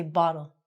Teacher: So, if it's between an O and an L, it's going to be said like a D. So we say bottle. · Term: T sounding like a D